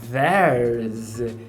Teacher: Já quando ele fala there's, eu prestei bastante atenção, eu fiquei olhando ali a boca para ver se essa língua sai para fora, mas eu não percebi essa dental. Então, para mim, essa dental, ela é reduzida para um z.